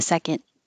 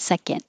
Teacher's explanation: you don't release the D